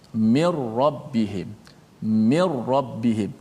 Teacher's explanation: Tak boleh kita baca min, tak ada dengung nun, tak boleh. Terus masukkan nun dalam ra.